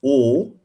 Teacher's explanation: It's a closed mid vowel o.